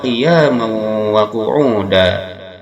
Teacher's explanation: Qiyamau di sini ada idgham ma'al gunnah. Dimasukkan tanwin patahnya pada waw disertai dengungan sebab tanwin patah bertemu dengan waw salah satu huruf idgham ma'al gunnah yang 4 ya nun mim waw.